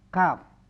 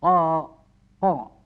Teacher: kalau kaf ada desis suara, ya kaf. Kalau qaf tebal, tapi makharijul hurufnya itu mengeluarkan makharijul hurufnya itu adalah dekat sekali ya, dengan kaf.